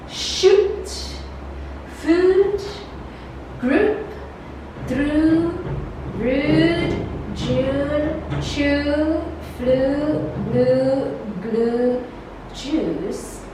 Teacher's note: for long oo, the tongue is relaxed from the closest position and is somewhat advanced from the back.